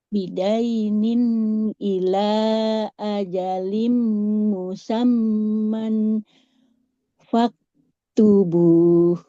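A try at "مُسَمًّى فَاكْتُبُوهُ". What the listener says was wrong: Nah, ini nggak boleh dibaca musamman ya. Kalau tanwinnya ketemu fa.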